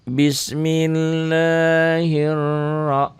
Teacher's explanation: Ro-nya dibaca tebal, tafkhim.